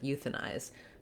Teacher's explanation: Typically, the letter I will say the I sound, but when we have that silent E, it changes to what sometimes is called long I. I prefer to call it diphthong I, because the length is actually short in this word, euthanize, because it's in an unstressed syllable.